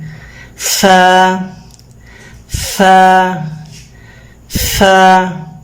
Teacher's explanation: اپنے اوپر والے 2 دانتوں سے اپنے نچلے ہونٹ کو آپ اس طرح کاٹیں